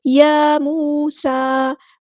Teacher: یا موسیٰ یہاں پہ کھڑا زبر ہے، الف کے برابر لمبا کریں گے، مد اصلی کریں گے